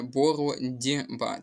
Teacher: У слові боротьба буде уподібнення за дзвінкістю. Так само глухий приголосний ть стоїть перед дзвінким приголосним б. Отже, цей глухий приголосний ть перетворюється на дзвінкий приголосний дь.